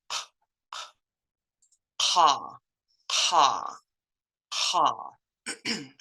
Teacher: comes from the back of your throat so it's kind of like your throat is puffing air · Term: Indian K